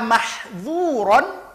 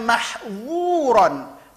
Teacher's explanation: makhraj tempat keluar dua huruf ini sama, ya, sama-sama ujung lidah nempel ke ujung gigi di atas, sama tempat keluarnya